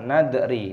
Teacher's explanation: 'Dal ' memiliki sukun yang dibaca nadri. Jangan qalqalah.